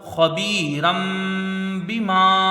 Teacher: را میں دو زبر کی تنوین ہے، را کو اوپر پڑھا جائے گا، اور تنوین کے بعد با ہے، یہاں اقلاب ہوگا، یعنی یہاں پر اب تنوین کو میم سے بدل کر غنہ کے ساتھ پڑھا جائے گا. باقی نیچے زیر ہے، جلدی پڑھیں گے، میم میں الف مدہ ہے، اس کو کھینچ کے پڑھیں گے، خبیرم بما.